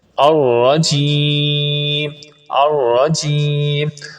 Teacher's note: الرجیم میں را پر زبر ہے، اور آپ کو پچھلے لیکچر میں بتایا تھا جس را پر زبر ہو اس کو پر پڑھتے ہیں، اور جیم کو تھوڑا سا لمبا کر دینا ہے تاکہ مد عارض بھی ادا ہو جائے